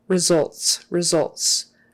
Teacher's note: that first syllable is not really accented